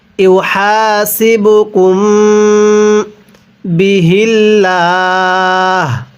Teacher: আও তুখফুহু ইউহাসিবুকুম, গুনাহ করব, কারণ মিম সাকিনের পরে এই যে বা, আর মিম সাকিনের পরে বা থাকলে মিম সাকিনগুলো গুনাহ করে পড়তে হয়